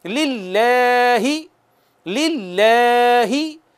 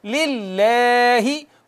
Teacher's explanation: इसमें जलालत से पहले अगर ज़ेर हो, कसरा हो, तो बारीक पढ़ते हैं। बारीक पढ़ने का तरीका हमने शेयर कर लिया, वो ये है कि आप ज़बान नीचे को रखें, नीचे को, ऊपर तालू की तरफ ना लेके जाएं। ज़बान तालू की तरफ जाती है तो हर्फ मोटा हो जाता है, हर्फ मोटा हो जाता है।